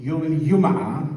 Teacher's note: the jim sound, which in some dialects is traditionally ya, as in yum'a rather than jum'a, but it's changing back to jum'a in some dialects, for instance in Al-Essa and Dammam.